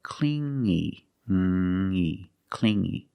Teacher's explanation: You hear the sound only the nasal sound here, no G, not clingy, but clingy, clingy.